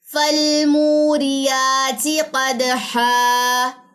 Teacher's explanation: دال کا کلکلا اور یہاں پہ الف مدہ اپلائی ہوگا لاسٹ پہ, 2 زبر کا وقف ہے